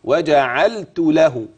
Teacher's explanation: انتبه للتاء المهموسه همس لطيف خفيف